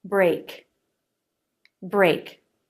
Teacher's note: Back of the tongue lifts up and touches the soft palate, then pulls away. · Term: K sound